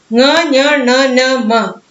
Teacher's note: ङ, ञ, ण, न, म और अनुस्वार ये सब नासिका से उच्चारित होते हैं और इस ध्वनि का नाम है अनुनासिक.